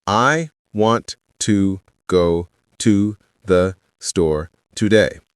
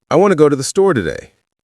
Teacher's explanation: Notice how want to became wanna. How to the blended together. How store got emphasized and the rest flowed quickly. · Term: natural rhythm